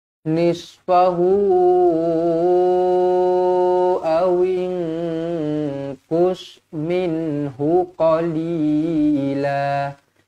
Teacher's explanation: nun kosong bertemu dengan qaf, ikhfa hakiki, dengung dua harokat.